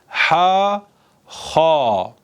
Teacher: Elif harfinden biraz daha üstü olarak boğazımızın üstünden çıkan ha harfi